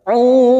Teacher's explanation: ujungnya kita pantulkan, karena ada huruf qalqalah yaitu huruf dal, karena mati di akhir kalimat dan dibaca waqaf, qalqalah kubra.